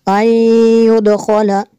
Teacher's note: نون ساکن کے بعد یا ہے حروف المعلوم میں سے، یہاں پہ ادغام ہوگا اس لیے غنہ کریں گے